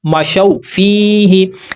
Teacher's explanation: زبر کی آواز سے واو کی طرف جانا ہے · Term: حروف لین